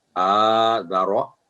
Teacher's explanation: रॉ लंबी नहीं होगी आवाज 1 सेकंड होगी, लेकिन ठीक है, थिक पढ़ना है